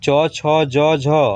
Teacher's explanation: तालु में सटेगा जीभ, आप लोग देखिए च तालु में सट रहा है